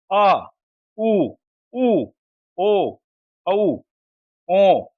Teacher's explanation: इनका उच्चारण करते समय जीहवा का पिछला भाग सक्रिय रहता है। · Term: पाश्च स्वर